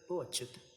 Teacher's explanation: भो को लंबा नहीं ले रहे हैं, 2 मात्राओं में उसका उच्चारण नहीं कर रहे हैं, एक ही मात्रा में बोल रहे हैं, तो वो लघु हो गया।